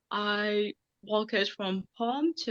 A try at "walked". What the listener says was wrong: And notice that I walked. We got swamped earlier, now we get walked. So it seems to be a systematic problem with this ed ending.